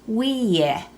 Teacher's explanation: Notice how that E sound stretches out. Some vowels in Maidu get dragged out longer than others. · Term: long vowels